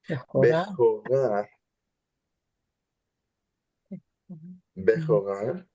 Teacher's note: Now we have an open syllable that's stressed, Now the ambiguity is gone. Bechorah is an open stress syllable. It has to be ah.